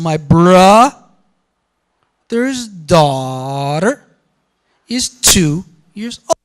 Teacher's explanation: the word years doesn't have a pitch accent but two does